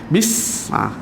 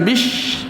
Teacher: Desiran yang mana menggunakan makhrajnya 4 gigi batang atas cukup lah. Dengan 4 gigi batang bawah dan lidah kita duduk belakang gigi. Tapi tak rapat lah, bunyikan satu.